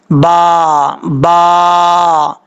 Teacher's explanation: نہ ہی اس کو پڑھنا ہے موٹا پڑھنا ہے، نہ ہی بریک پڑھنا ہے، نارمل طریقے سے پڑھنا ہے. اوپر والا ہونٹ نیچے والا ہونٹ ان کی گیلی جگہ جو ہے یعنی تری والی جگہ آپس میں ملے گی تو با پڑھا جائے گا